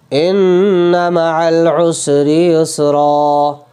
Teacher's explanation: ہے، دو زبر کی تنوین ہے، ٹھیک ہے، تو اسے ہم ایک زبر کو گرا دیں گے اور ایک زبر کو الف کے ساتھ پڑھیں گے